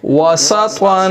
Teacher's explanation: त्वा मोटा है इसको मोटी आवाज से पढ़ेंगे